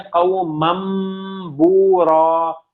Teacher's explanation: اب باقی جو تنوین کی ساؤنڈ ہے اس کو میم میں بدل دیتے ہیں, یعنی قومن, نون کی ساؤنڈ ہے نا, اس کو آپ میم میں چینج کر دیتے ہیں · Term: اقلاب